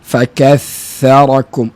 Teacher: hujung lidah bersentuhan dengan hujung Gigi kacip atas